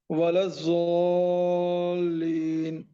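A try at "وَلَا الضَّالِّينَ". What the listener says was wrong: زو نہیں بولیں گے. ضا ولا الضالین.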